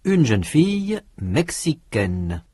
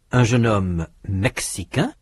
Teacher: In sound, the feminine forms mexicaine and brésilienne have a consonant n that the masculine forms do not.